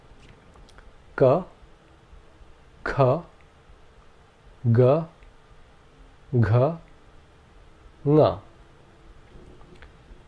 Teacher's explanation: The first group of consonants are gutturals, which means they come from the throat. The air is blocked by the tongue at the back of the throat until a vowel comes along and releases the air along with the sound.